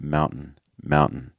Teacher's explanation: It has a kind of like a softer version, which is the stop T or the held T, which basically means that we're trying not to release as much air on that T sound. So you don't get that like t, t, t.